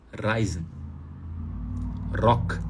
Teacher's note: Então, como é que você resolve isso de uma vez por todas? Poxa, o R está antes de vogal, vibra a ponta da língua.